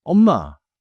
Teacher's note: Feel your lips meet twice, softly.